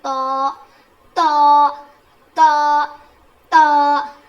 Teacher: मैंने बताया था ना कि ता दाल और त का मखरज सेम है। जुबान की नोक को सामने के दो दांतों के जड़ में लगाने से अदा होता है।